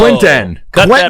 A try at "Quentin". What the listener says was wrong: No, don't put the second E. It's the first E. You're saying Quentin.